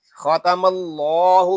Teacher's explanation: अल्लाह पाक का लाम इसलिए पुर पढ़ा जाएगा कि अल्लाह पाक के लाम से पहले हरफ पर ज़बर आ गया है। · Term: लाम पुर